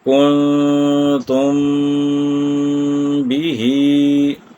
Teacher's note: میم ساکن کے بعد اگر با آ جائے تو وہاں پر ہم میم ساکن کو چھپائیں گے اور با کو ادا کریں گے، اور اس کی مقدار بھی 1 الف یا 2 حرکات ہوگی۔ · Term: اخفاء شفوی